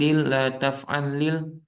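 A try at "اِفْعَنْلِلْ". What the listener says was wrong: Nah ini bukan if alil, if an lil, ada nunnya dulu. Nunnya itu diperjelas ya. Jadi izharnya itu diperjelas dulu. If an lil. Jadi hati-hati rekan-rekan ya, kalau membaca nun bertemu lam itu terkadang masuk ke lamnya, jadinya idgham begitu ya. Tidak usah diidghamkan ya. Jadi nunnya tetap dibaca.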